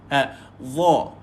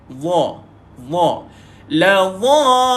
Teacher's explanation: Bila sebut huruf dha, lidah kita pergi kat bawah gigi atas.